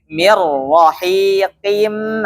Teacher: Jadi nun sukun, apabila nun sukun atau tanwin bertemu dengan huruf ra ya, maka idgham suaranya langsung masuk ke huruf ra-nya, namun tanpa bila gunnah, tanpa gunnah.